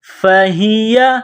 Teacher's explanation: یہ گول ہا ہے چشمے والی، منہ سے ہوا نکالنے کی طرح اس کو پڑھتے ہیں